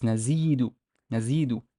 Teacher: Nazidu, because the z here, basically there's a yeh after it, and there is no vowel, so we know it's a long vowel e sound.